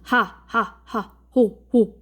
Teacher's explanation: 목청 소리는 목청 사이에서 나는 소리인데 바로 히읗 소리가 여기에 해당되죠. 호 하면은 목청에서 발생을 합니다.